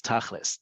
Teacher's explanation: Tachlis is the Ashkenazi inflection on the word tachlit, right? Because in Ashkenazi Hebrew, certain letters are pronounced certain ways, certain vowels are pronounced differently than in modern Hebrew, and it comes out as tachlis.